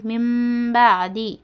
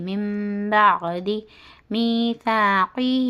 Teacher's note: نون ساکن کے بعد با ہے تو نون کو میم سے چھوٹی میم کے ساتھ بدل کر گنہ اور اخفا کے ساتھ پڑھنا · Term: اخلاب